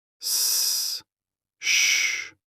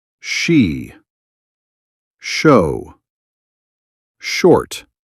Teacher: S is sharp. Sh is soft, like gentle air.